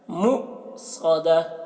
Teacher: مؤ میں جھٹکا لگے گا کیونکہ حمزہ ساکنہ ہے، مؤصدہ، صدہ، صوت کو موٹا کر کے، مؤصدہ علیہم نار مؤصدہ.